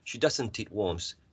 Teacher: We omit the t sound if it's in between a consonant and a vowel sound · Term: elision of the final t